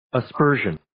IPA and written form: ə'spɜːrʒən (Aspersion)